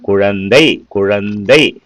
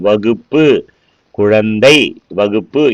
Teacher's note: சொல்லுக்கு முதலிலேயும் இடையிலேயும் வரும்பொழுது இந்த கூ என்ற எழுத்து நீண்டு ஒளிக்குது